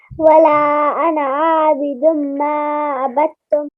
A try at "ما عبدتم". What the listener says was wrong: ماں کو بہت لمبا نہیں کریں گے، ٹھیک ہے. ما عبدتم.